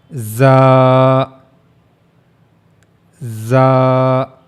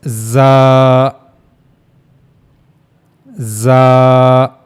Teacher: while reading za, you have to make a whistle like sound, za, za, and you also have to read it in strong voice.